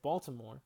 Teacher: For instance, when I said Baltimore, sure, the first syllable is stressed, but you would probably argue that the second two syllables, to more, are both equally unstressed